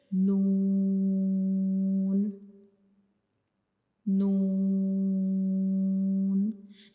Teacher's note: तो नून को पढ़ते हुए हमारी ज़बान की नोक का ऊपर वाला हिस्सा, यानी ज़बान की जो नोक होती है वो वाला हिस्सा, ऊपर वाले जो सामने वाले दो दांत हैं उनके अंदर वाली साइड पे जो मसूड़े हैं उनसे जा मिलेगा, ठीक है। नून को कैसे हम अदा करते हैं, जब हम नून को पढ़ते हैं तो हमारी ज़बान की जो नोक होती है वो हमारे ऊपर वाले जो सामने वाले दो दांत होते हैं उनकी अंदर वाली साइड पे जो मसूड़े होते हैं उनको टच करेगी ज़बान की नोक। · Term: नून का मखरिज